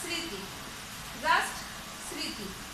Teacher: আমরা সাধারণত উচ্চারণ করি, মটা আর উচ্চারণ করি না, স্মৃতি, জাস্ট স্মৃতি, এভাবেই উচ্চারণ করি।